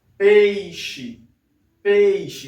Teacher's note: Repare então que o som do E ele sai um pouco mais forte que o som do I